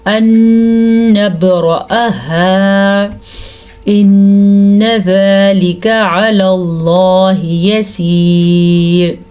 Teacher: ان نبرأہا، پھر سے ادغام بالغنہ کا قاعدہ ہو رہا ہے اور با پہ قلقلہ بھی ہو رہا ہے۔ حمزہ کو لمبا نہیں کرنا لیکن آگے الف مدہ ہے تو ہم الف مدہ کو کھینچ کے پڑھیں گے